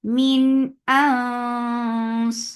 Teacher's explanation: This ikhfa is heavy, so lift your tongue up to make this heavy ikhfa.